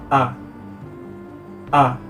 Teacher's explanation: Bunyi A termasuk ke dalam bunyi vokal, yang itu bunyi yang tidak terhambat oleh alat ucap. Cara pengucapannya ialah dengan membentuk bibir hampir bulat, kemudian merendahkan lidah serendah mungkin.